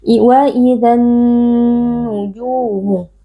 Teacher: Cara membacanya, alif lamnya kita masukkan atau kita idghamkan ke dalam nun. Dan karena nun ini menjadi bertasydid an-nujumu, maka berlaku hukum gunnah. Jadi wajib kita baca dengan dengung yang dipanjangkan.